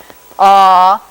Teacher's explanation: For ah, the tongue is sort of bunched towards the back of the mouth, pretty low down though, something like this. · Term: vowel ah